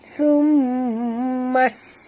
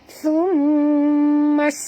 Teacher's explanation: Okey, di atas mim ada tasydid, maka kita kena dengung, wajib dengung ya. Kemudian bunyikan sofir pada sin yang mati.